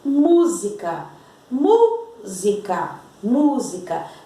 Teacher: E o outro exemplo, música, música, música. A sílaba tônica é o mu.